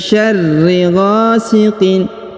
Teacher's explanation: Huruf ra ditahan dan ditekan ya, syarri, karena berharokat tasdid.